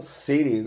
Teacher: E americanos falam city, esse T aí meio D, meio R